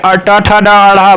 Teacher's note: ट ठ ड ढ़ मूर्धा होता है